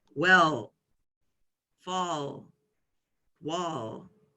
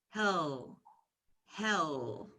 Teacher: when we make this sound for L the dark sound our tongue is actually sticking out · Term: dark L